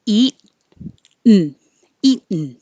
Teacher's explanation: You don't hear the T at all.